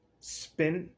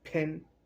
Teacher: the unaspirated P of spin and the aspirated P of pin